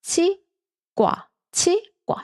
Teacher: we read this 과 as 과 with the more intense sound, with an intense sound